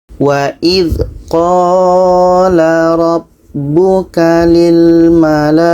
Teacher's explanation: Panjangnya adalah 4 sehingga 5 harakat ketika wasol atau bersambung. Wasol itu maksudnya bersambung, bacaannya bersambung, dan panjangnya 6 harakat ketika waqaf atau berhenti. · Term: mad wajib muttasil